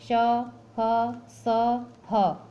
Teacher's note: ऊष्म का अर्थ है गर्म। जिन व्यंजनों के उच्चारण में वायु मुख के विभिन्न भागों से रगड़ खाती हुई बाहर आती है और गर्मी पैदा करती है, यानी इसको बोलने में गर्मी महसूस होता है, उसे ऊष्म व्यंजन कहते हैं।